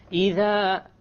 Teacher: The dhal, my tongue is outside. إِذَا, and then when I get to zul, the tongue goes inside.